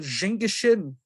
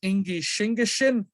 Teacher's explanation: changing the ZH in Jingishin to SH, making the sh sound. So it goes from j to sh.